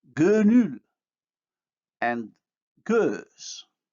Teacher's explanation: The vowels here are minus back plus round.